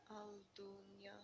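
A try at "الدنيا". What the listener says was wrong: Ad-dunya. Lam is silent because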